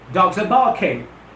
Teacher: Remember, the R in the spelling of bark is quiescent, is silent. I don't want you people to produce the sound of R there, because it goes silent.